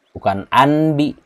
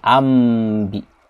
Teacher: bukan nun yang dibaca, tapi dimasukkan nunnya ke dalam ba. Makanya di sini ada tanda huruf mim. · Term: iqlab